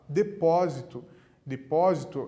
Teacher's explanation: depósito é uma proparoxítona o pó é a antepenúltima sílaba